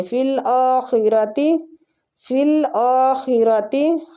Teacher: خا کو کھینچیں گے، خا کو پور پڑھیں گے مستعلیہ اور حمزہ کو کھینچیں گے.